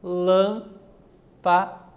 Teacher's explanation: Também temos 3 sílabas e lã é a parte acentuada.